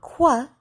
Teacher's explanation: the Q sound, or qua, is a combination of the K and W sound